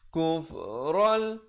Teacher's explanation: Kufral di sini idgham bila gunnah. Tanwin bertemu lam. Asalnya kufran, tapi bila datang lam nama hukumnya masuk tanpa dengung